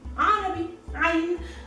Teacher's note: You make it with the uvula, this thing that is moving inside your throat.